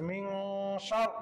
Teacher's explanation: রা জবর শার মিন শার সেখানে পরে শিন ইকফার হরফের জন্য নাকের ভিতর লুকাই গুণনা করে পড়তে হচ্ছে